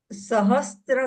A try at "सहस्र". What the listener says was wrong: त्र नहीं बोलना है, र र सहस्र।